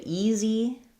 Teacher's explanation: first syllable stress, tense e vowel, and then this letter s says the z sound.